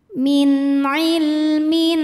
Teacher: tanwin ini kita bunyikan dengan jelas jadi masih bunyi n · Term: izhar halqi